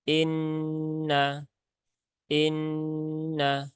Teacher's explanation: Nun bertasdid ada gunah musyaddadah maka tunaikan taronumnya ya jadi tunaikan taronumnya ditahan tiga harakat